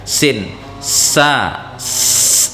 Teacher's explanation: Adapun sin ini di ujungnya sama sekali. Sin disentuhkan dengan pangkal gigi seri atas. Pangkal gigi seri atas itu ya akar gigi jalan tadi.